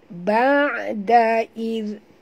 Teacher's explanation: huruf zal lembut sebutannya, sentil ke lidah.